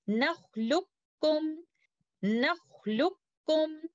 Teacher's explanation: But letter kaf has a shadda indicating idgham kamil happening here. So instead of reciting it like this, nakhluqukum, we recite it by doing idgham kamil like this.